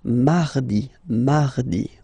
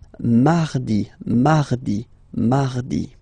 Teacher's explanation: So you can hear that you don't pronounce it that strongly, this R.